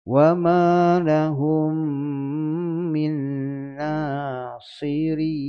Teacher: Sot memang tebal, tapi bila matikan ra, bawah rin nipis ya.